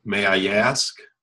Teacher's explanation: So here's what happens when you have an I and an A following it. In English, we kind of pronounce it with a Y.